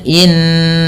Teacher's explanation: Kemudian innaka, ya tahan bunyi suara gunnah ketika bertemu pada lafal innaka yang dimana di sini merupakan bacaan gunnah, suara nunnya ditahan